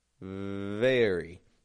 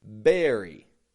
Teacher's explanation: My bottom lip is just lightly touching my top teeth.